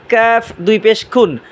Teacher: জিহ্বার আগা থেকে একটু সামনে বাড়াবেন তার বরাবর উপরে তালুর সাথে লাগাবেন